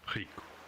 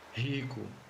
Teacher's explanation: When at the beginning of a word or doubled, in European Portuguese it's r, similar to a French or German R, while in Brazilian Portuguese it's ha, or ha. For example, Rico.